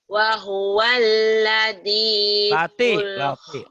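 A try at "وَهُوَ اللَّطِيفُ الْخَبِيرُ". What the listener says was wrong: Lati bukan ladi, lati. Lati, tok bukan ladi, lati. Lati. Wa huwal latiful khabir.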